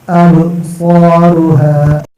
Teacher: با ساکن ہے، با پر قلقلہ کرنا